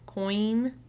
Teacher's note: this is a vowel sound where your mouth changes shape during the vowel sound